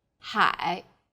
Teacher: a third falling then rising tone